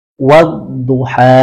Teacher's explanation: Wanya jangan mengeluarkan udara di sana.